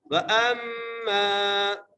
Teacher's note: وَأَمَّا، واو زبر وا، حمزہ کو میم سے ملانا ہے، میم پر غنہ کرنا ہے. آگے میم کو نون سے نہیں ملانا، میم کو آگے چھوٹی سی میم یہ لکھی ہوئی ہے، اس میم سے ملانا ہے.